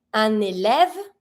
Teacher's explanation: I link it with my N because it starts with a vowel.